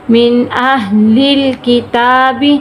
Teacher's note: نون ساکن ہے، ہم غنہ نہیں کر رہے، کیوں؟ نون ساکن کے بعد حروف حلقی میں سے حمزہ آ گیا۔